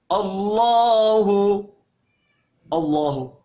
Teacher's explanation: अल्लाह के नाम से पहले हमजा के ऊपर जबर है, अल्लाह के नाम को मोटा पढ़ेंगे। और लाम के ऊपर खड़ी जबर है, इसको एक अलिफ के बराबर खींच कर पढ़ना है, हु को खींच कर नहीं पढ़ेंगे।